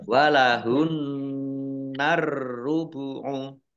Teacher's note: Nun tasdid dibaca hunnah, ditahan 2 harokat. Alif lamnya alif lam syamsiyah karena tidak dibaca langsung masuk ke huruf berikutnya yaitu ro, ditandai roknya ada tasdidnya.